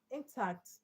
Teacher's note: Um intact intact is an adjective but because in has short e sound t has strong vowel sound. So the stress goes to the second syllable